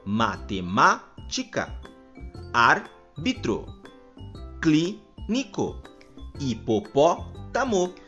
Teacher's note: nestas palavras nos pronunciamos a antepenúltima sílaba com mais intensidade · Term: palavras proparoxítonas, proparoxítonas